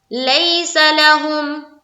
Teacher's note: یا لین کو پڑھتے ہیں نرم آواز کے ساتھ اور جلد